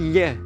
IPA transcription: ʎ